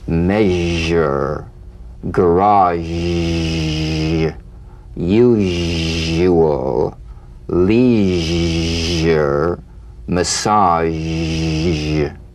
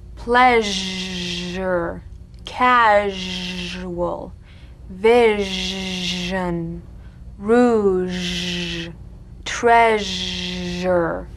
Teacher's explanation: All suggestion of the SH must vanish. Feel the SH overridden by the deep rumbling vibrations of the ZH, resonating against the teeth and the tip of the tongue.